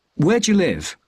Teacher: the stress is on where and live so where is stressed live is stressed but do you is not stressed so this means we don't say where do you live it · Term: j sound